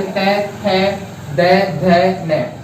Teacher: जैसे तय बोलेंगे तो जीभ, ये जीभा जो जाके ऊपर वाले दांत हैं उनके जो जड़ में जाके लगेगी, तो वहां से जो ध्वनि निकलेगी वो क्या कहलाएगी, दंत व्यंजन कहलाएंगे।